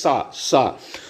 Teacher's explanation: इसमें जो है हवा जो है वह रगड़ के आ रही है बाहर, थोड़ा घिस के बाहर आ रही है, जिसकी वजह से थोड़ा दोस्तों सीटी टाइप का जो है आवाज निकल रहा है, जैसे सा। तो इसमें दोस्तों हम लोग अगर हम सा की बात करें और इसमें जो है, ये चारों दोस्तों ऊष्म या फिर संघर्षी व्यंजन में आएंगे।